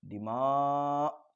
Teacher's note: دماء کے میم میں الف مدہ ہے، الف مدہ کے حمزہ اسی کلمے میں ہے تو یہاں پر مد ہوگا تو اس کو کھینچتے ہوئے، اور یہ مد متصل ہوگا۔ دماء، تھوڑا کھینچتے ہوئے جو ہے پھر یہ حمزہ کو جو ہے اچھی طریقے سے واضح کریں۔